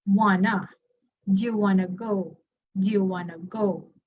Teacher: the two words want to, they're also connected. So instead of mentioning want to, wanna.